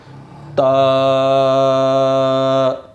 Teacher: با، تا، زبان کی نوک اوپر والے دانتوں کی جڑ سے لگے گی تو تا ادا ہوگا۔ تا، اچھا، تا کو ادا کرتے وقت آپ نے اس کو باریک پڑھنا ہے، اس کو پر نہیں پڑھنا۔